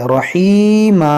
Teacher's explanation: یہاں پر دیکھیں تنوین کے بعد را ہے, یہاں پر ادغام کریں گے بغیر گنہ کے, اور یہ دو زبر کو ہم الف سے بدلیں گے